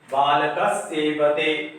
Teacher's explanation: बालका प्लस सेवते, बालक सेवा करता है किसी की, तो विसर्ग के बाद दंत स है इसलिए विसर्ग को दंत स में परिवर्तन कर दिए